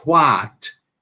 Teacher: O inglês americano, antes do what, ele vai ter o som h, h. Isso é uma coisa que muitos americanos fazem, certo?